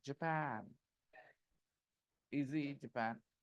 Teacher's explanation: the stress is on the second syllable